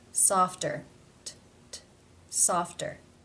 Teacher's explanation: it comes at the end of a syllable in a consonant cluster F T therefore as it is part of this cluster it is pronounced as a real T sound